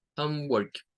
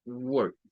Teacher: es un sonido como una UR parecido al schwa, pero no es el schwa